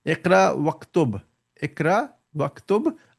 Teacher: I didn't pronounce the Alif in the middle again.